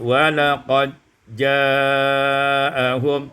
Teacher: idghamul dal fil jim, diidghamkan dal pada jim menjadi walaqad ja'ahum.